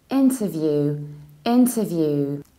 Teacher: You pronounce int and you reduce t. You don't have ta or ter, but you say t.